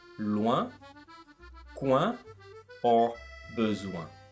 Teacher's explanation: It starts with the sound wa that we've just seen and end with the sound un. Wa, un, ouin. · The last part of the sound is nasalized, which means that the air comes through your nose.